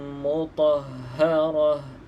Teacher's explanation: pastikan ha keluar pada halqum bahagian paling bawah sekali. Ha ini, ha bulat.